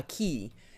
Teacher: there's an accent on the I, so you know that the I gets the emphasis